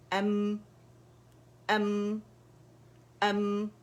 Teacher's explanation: تصادم ہو گیا دونوں ہونٹوں کے درمیان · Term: سکون